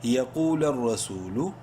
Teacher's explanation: سو لمبا کریں گے ایک الف کے برابر واو مدہ کی وجہ سے